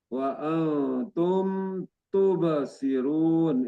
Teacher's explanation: Ini mim sukun berhadapan dengan ee ta domah. Ini berarti ee idhar safawi dibaca jelas.